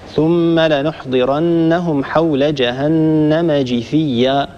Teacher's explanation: قرأ حفص رحمه الله بكسر الجيم من كلمة جثيا